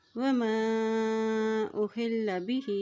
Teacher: حمزہ کے اوپر مد ہے اس لیے اس کو لمبا کر کے ادا کریں گے۔ ہا کی زیر کو لام کے ساتھ ملاتے ہوئے پڑھیں گے، لام کے اوپر شد ہے۔